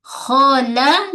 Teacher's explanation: lam tepi hujung lidah menyentuh pada gusi gigi atas. Pada ta kita tahan dulu suara syiddah, kemudian baru lepaskan hams, angin.